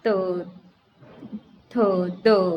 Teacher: दांत से त वर्ग की ध्वनियाँ